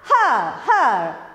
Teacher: the last letter R is not pronounced. Okay, we don't give any stress.